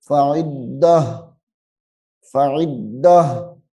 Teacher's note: ہے، رکنا ہے، تو اس تا کو ہا میں بدلنا ہے، اس تا کو ہا میں بدل دیں گے وقف کرنے کی صورت میں